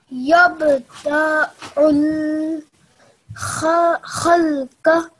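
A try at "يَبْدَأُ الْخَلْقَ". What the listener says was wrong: Now you read it quite well, but just your timing of da is a bit longer. So these are plain strokes, just 1 second to each letter.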